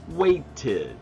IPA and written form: weɪtɪd (waited)